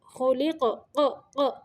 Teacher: قاف کو ساکن کرتے ہوئے قاف کو تھوڑی تھوڑی حرکت دے رہے ہیں، یہ اس کو قلقلہ کہتے ہیں۔